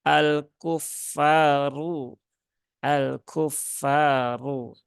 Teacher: ada Alif ya Alif setelah fathah Nah maka Fanya dibaca Dua harakat